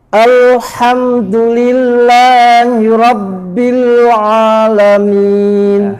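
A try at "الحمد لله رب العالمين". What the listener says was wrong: Haknya bukan al-ha, bukan ha, al-ha. Dan ain juga bukan a. Harus pangkal lidah di bawah. Al-ha dan al-a. Tipis dua-duanya. Alhamdu Rabbil a.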